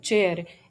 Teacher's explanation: पैलेटो alveolar place पे ये बनती है और ये वॉइसलेस है, इसलिए इसका correct answer B voiceless पैलेटो alveolar एफ्रिकेट होगा।